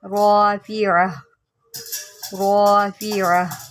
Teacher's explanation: اب یہ گول تا کے اوپر ہے تو ہم اس کو ہا ساکن سے بدل دیں گے